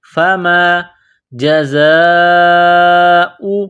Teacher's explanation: فا زبر فا، میم الف زبر ما، فَمَا جَزَاءُ، زا ہے، زا میں سیٹھی کی آواز پیدا کریں گے، دانتوں کو سختی کے ساتھ ملائیں گے ، یہ مد ہے لمبی مد، 4 الف کے لمٹ میں